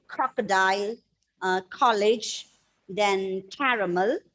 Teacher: Okay, so you should feel that plosive sound. You should feel that air, gush of air when you say the word starting with ta, ta, and ka. Ka means not the letter ka, the sound ka. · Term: plosive sounds